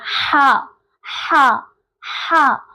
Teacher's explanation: ہمارے ہا کا مخرج ہوتا ہے جو کہ وسط حلق سے ادا ہو رہا ہوتا ہے